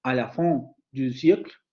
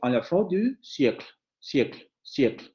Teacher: Al final de un grupo o secuencia fónica, la vocal no se pronuncia.